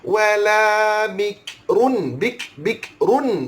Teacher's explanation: Ru muncul mulut, run senyum balik.